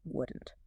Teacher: The difference between I would and I wouldn't can be very subtle and fast speech. Sometimes it's just a sudden stop of air at the end of the word